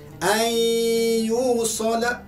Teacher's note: Masuk beserta dengan dengung. Jangan tak dengung, mesti dengung.